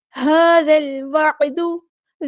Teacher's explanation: ذال کو ہم نے لام کے ساتھ ملا دینا ہے، حمزۃ الوصل ہمارا ڈراپ ہو جائے گا، لام یہاں پر لام قمریہ ہے.